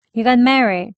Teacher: 그냥 들리기에는 Mary까지만 발음하는 걸로 들립니다.